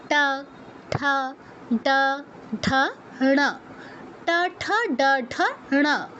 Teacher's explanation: এদের উচ্চারণের ক্ষেত্রে আমাদের জিহ্বাটা একটু ফোল্ড করে একটু গোল করে নিয়ে ওই পেছনে মূর্ধায় টাচ করাতে হয়। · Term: মূর্ধন্য